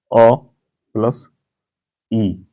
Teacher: ये अ जो है आपका कंठ है और ये जो है आपका तालव्य है